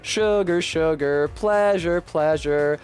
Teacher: both of those words have the stress on the first syllable and not the second